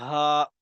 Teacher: یہ گول ہا ہے، گلے کے نیچے سے ادا ہوگی